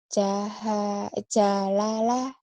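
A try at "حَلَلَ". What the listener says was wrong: Nggak ada titiknya, itu bukan ja. Kojak sih, ini halala.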